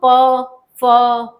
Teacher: नीचे का होठ ऊपर के होंठ को टच करता है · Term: ओष्ठ से बोलने वाले